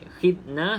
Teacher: Za jangan dilantunkan sebab bukan daripada Qalqalah